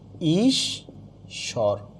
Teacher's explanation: হ্রস্বইকার বা দীর্ঘইকার যাই থাকুক না কেন উচ্চারণে সবসময় কি হচ্ছে? হ্রস্বইকার হচ্ছে।